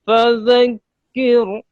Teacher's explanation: ایک تو یہ را ساکن سے پہلے زیر تھی، آپ اس کو پر پڑھ گئے ہیں، اس کو باریک پڑھنا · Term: را باریک